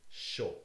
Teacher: you take the postalveolar sh and the vowel o to make sho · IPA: ʃo